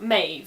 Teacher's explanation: Now the DH sound in medieval Irish would be a th, and the BH would be a v, hence Medb. In modern Irish though, the DH becomes silent, which leaves you with something more like Maeve, and that's how it's generally anglicised.